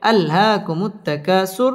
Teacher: র পুর হবে এবং এখানে ওয়াকফ করতে হবে